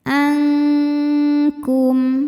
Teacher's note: Bunyi dengungnya besar karena makhraj huruf kaf jauh dari makhraj huruf nun. Ini di ujung lidah, ini di pangkal lidah. · nunnya dibunyikan samar-samar, siap-siap menuju kaf disertai dengung. Bunyi dengungnya besar karena makhraj huruf kaf jauh dari makhraj huruf nun.